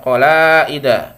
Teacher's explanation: tadi bacanya harus panjang yang lima harakat · Qalai ya, i-nya ini ya yang menjadikannya sebagai mad wajib muttasil ya. Jadi bacanya harus panjang 5 harokat atau 2,5 alif ya